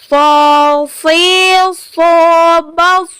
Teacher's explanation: Yang pertama yaitu huruf so. Sifat huruf dari so ini dia mesti dibaca sofir, seperti kita saat bersiul.